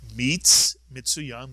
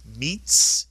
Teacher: The shva under the tsari is silent, and therefore you simply extend the syllable by that letter, adding the tsari to the preceding letter and vowel to make one syllable, mitz.